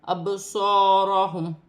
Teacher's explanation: با ساکن ہے، حروف قلقلہ والا حرف ہے، قلقلے کے ساتھ ادا کیا جائے گا